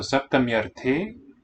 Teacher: So saptamyarte, note that the long E, when the vowel A follows, gives way to a ya.